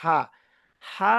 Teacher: গলার মাঝখান থেকে একটু শক্তি দিয়ে উচ্চারণ